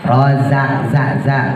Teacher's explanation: Rozak za, ujung lidah taruh bawah ya, ujung lidah taruh bawah sama kayak sin ya, taruh antara gusi sama gigi